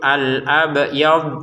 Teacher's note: Huruf ba-nya saja yang dipantulkan ya, huruf dotnya jangan. Jadi kita bacanya itu al-abyad seperti itu.